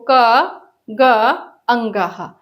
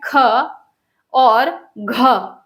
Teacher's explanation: दूसरा और चौथा जो वर्ण है उसको बोलेंगे तो जो वायु है वो अधिक मात्रा में निकलेगी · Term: महाप्राण